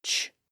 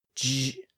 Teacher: It's a voiceless sound, so the vocal folds are open and silent when we make that sound. But if we constrict those vocal folds and make them vibrate, the sound switches from ch to j. So it becomes the J sound, sometimes called the soft G sound, like at the beginning and end of the word judge. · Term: voiced version